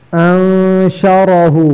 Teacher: را پر زبر ہے، را کو موٹا کرنا. اگر را پر زبر یا پیش ہو تو را پر ہوگی.